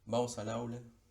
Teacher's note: La S se encadena con la A y la L con la A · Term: encadenamiento